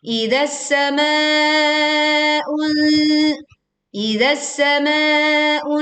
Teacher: panjangkan ma 4 sampai 5 harokat atau juga boleh sampai 6 harokat